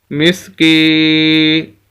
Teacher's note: کاف کو ہم نے یا کے ساتھ ملایا اور کاف کو ہم لمبا کر رہے ہیں۔ وجہ اس کی یہ ہے کہ یہ یا مدہ ہے، جیسے الف مدہ کے بارے میں بتایا، یہاں پر یا مدہ آ گئی کہ ایسی یا ساکن جس کے پچھلے لفظ کے نیچے زیر ہو۔